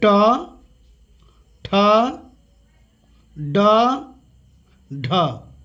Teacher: मूर्धा, तालु से 2 इंच ऊपर की ओर जीभ जहाँ स्पर्श करता है उसको हम लोग मूर्धा कहते हैं